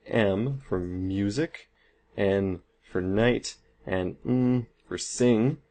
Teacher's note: we do make an obstruction and it goes through the nasal cavity instead so it comes out of our nose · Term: nasal sounds